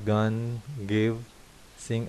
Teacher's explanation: sound produce with the back of your tongue against the वेलम are called वेलर्स